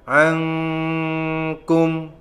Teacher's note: nun sukun ketemu dengan huruf kaf, maka dibaca ikhfa, samar-samar.